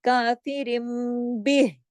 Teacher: ہا کی آواز ہمارے گلے میں آنا ضروری ہے. کافرم بہ، ہا کی آواز آنا ضروری ہے.